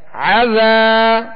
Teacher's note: ذال کو نرمی کے ساتھ ادا کر دیں اور ایک الف کی مقدار کھینچیں گے ، یہاں الف مدہ ہے، عذا، عین کو درمیان حلق سے